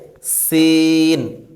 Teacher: জিহ্বার আগা সামনের নিচের দুই দাঁতের আগার সঙ্গে লাগিয়ে